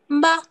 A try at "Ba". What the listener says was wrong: Il n'y a pas M devant, c'est pas Mba. Ne dis pas M.